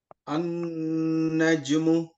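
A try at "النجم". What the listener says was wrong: जीम को कलकला करें आप, ज वापस लाए, नून के ऊपर गुन्ना करें। नज्म। नज्म। हाँ जीम जो है ना कलकला वर्ड है, बाउंस करना वापस। नज्म।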